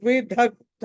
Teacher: విదగ్ధ ధా అక్కడ మహాప్రాణము ఒత్తి పలకాలి